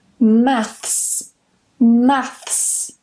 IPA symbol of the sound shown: θs